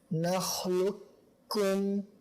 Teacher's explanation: tidak ada sisa ketebalan yang dibaca, akan tapi langsung ke huruf kaf